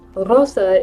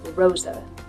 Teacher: But if we use the American English R at the beginning, Rosa, it's much more deep and pulled back into the throat because we're using that that bunched R position to make that Rosa sound.